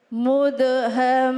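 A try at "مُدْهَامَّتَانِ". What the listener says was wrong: Ulangi lagi. Haknya panjang baru. Emang kudu ditekan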